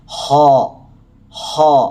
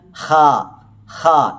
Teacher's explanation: ഒന്ന് ഒരു ഗാംഭീര്യത്തോടുകൂടി ഒരു ഘനപ്പിച്ചാണ് ഉച്ചരിച്ചത് ഹ ഹ എന്നാൽ ഹ ഹ ഇത് ഘനമില്ലാതെയുമാണ് ഉച്ചരിക്കുന്നത് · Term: ഘനപ്പിച്ചു ഉച്ചരിക്കുക